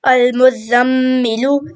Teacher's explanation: میم مشدد ہے اور میم مشدد پہ ہمیشہ غنہ ہوتا ہے. المزمل، اور غنہ ناک میں آواز چھپانے کو کہتے ہیں.